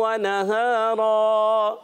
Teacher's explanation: 2 زبر کی تنوین کو وقف میں الف سے بدل دیں گے. اس کو کہتے ہیں وقف بالابدال مع الالف.